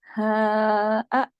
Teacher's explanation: اس ہا کی آواز سینے کی طرف جاتی ہے۔